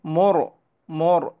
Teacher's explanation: মোর একটু গোল করে পড়লাম, একটু মোটা করে পড়লাম।